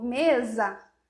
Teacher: Então a gente tem o s com som de z em português isso não existe no espanhol